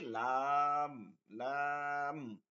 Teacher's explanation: জিহ্বার আগার কিনারা সামনের উপরের দাঁতের মাড়ির সঙ্গে লাগে